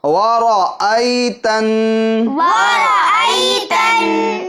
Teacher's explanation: حمزہ میں عین کی آواز نہیں آنی چاہیے